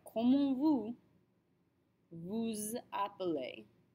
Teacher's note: Don't forget that liaison between the vous and the appelez.